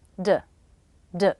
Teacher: I reduce the vowel to the schah D D I say it as fast as I can you